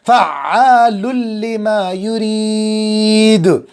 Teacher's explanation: ملا کے پڑھ دیں گے بغیر آواز کو ناک میں لے جائے بغیر